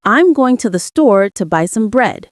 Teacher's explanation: in the sentence, I'm going to the store to buy some bread. The stressed words would be going, store, buy, and bread.